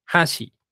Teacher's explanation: la sílaba primera es alta y la segunda es baja